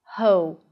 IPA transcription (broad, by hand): hoʊ